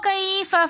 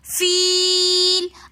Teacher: کیف میں جو یا ہے یہ یا لین ہے، اس کو ہم نے نہیں کھینچا۔ فیل میں جو یا ہے یہ یا مدہ ہے، فی ہم نے اس کو ایک الف کی مقدار کھینچ کر پڑھا